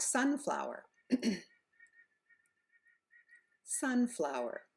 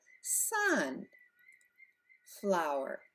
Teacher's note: we put the accent on the first word Sun so we're going up and we're lengthening the vowel